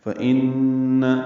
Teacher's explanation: نون مشدد ہے، اس میں غنہ ہے، آواز ناک کے بانسے میں لے جائیں گے، 2 حرکات تک ٹھہرائیں گے۔